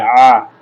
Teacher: এই আইনটা আমাদেরকে হলকের মধ্যখান থেকে গলাটা চেপে উচ্চারণ করতে হবে